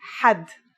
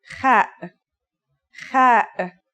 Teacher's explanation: According to phonetic charts, ha is pronounced in a deeper part of the throat than kha.